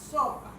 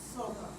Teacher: cuando dice S, la liberación de aire es pausada, pero no es de forma directa, es lateral